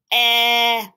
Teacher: I can feel my my larynx or my voice box in my throat vibrating e it's also continuous it can go on for the end